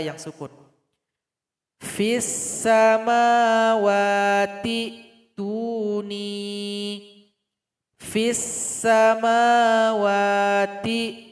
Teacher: kasrah 'ta' berhubungan langsung dengan sukun hamzah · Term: wasl